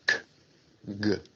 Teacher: Velar sounds are produced at the velum or soft palate, such as k, g. Tenemos estos sonidos velares donde la lengua se va para la parte del velo.